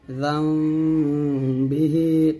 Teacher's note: দুই ঠোঁট মিলে করে গুণটা আদায় করতে হবে, তবে ঠোঁটের মাঝে একটা ফাঁকা রাখবেন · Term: ইকলাব গুন্না